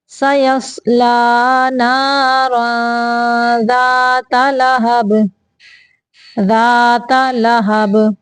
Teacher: اخفاء کا قاعدہ ہے، آواز کو تنوین کی آواز کو ناک سے چھپا کے نکالنا ہے۔